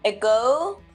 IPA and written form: əˈɡoʊ (Ago)